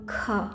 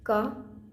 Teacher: जब हम ख बोलते हैं तो ज़्यादा हवा निकलती है और क में कम निकलती है